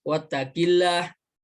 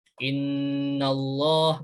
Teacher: hukum tajwidnya itu lam jalalah tafkhim, dibaca tebal